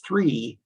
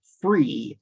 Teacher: merger of the sounds associated with the letters f and the letters th which makes a word like the number three sound more like free